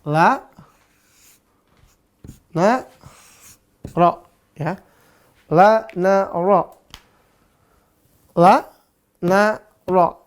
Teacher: ro ujung lidah dengan langit-langit belakang · tiga-tiganya sama semua tipis dan napasnya ditahan